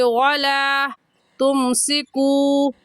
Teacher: तुमसिकू को थोड़ा सा खींचेंगे क्योंकि वाव साकिन से पहले पेश आ गया तो वाव मद्दा कहलाएगा और वाव मद्दा को एक अलिफ की मिकदार खींच कर पढ़ते हैं